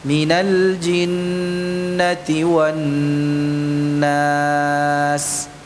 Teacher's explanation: Suara dengung yang keluar dari rongga hidung. Itu dipanjangkan durasinya.